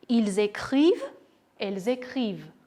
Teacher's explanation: Չմոռանանք կատարել liaison, որովհետև երկու ձայնավոր ունենք իրար հետ